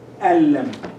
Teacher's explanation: So when we have lam after the noon sakin, we say, we combine them, but we suppress this sound, this musical sound, which we call ghunna.